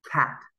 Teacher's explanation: you should be able to feel the puff of air that comes out of your mouth when you pronounce cat